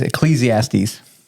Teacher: between the S and the T there's no vowel